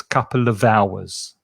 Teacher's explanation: the sound from of connects with the vowel sound because remember the h is silent on hours